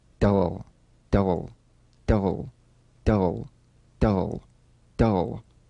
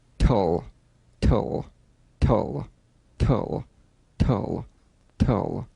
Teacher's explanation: DL and TL, cognates, voiced and unvoiced, tongue tip to gum ridge consonants.